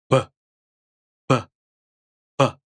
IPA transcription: b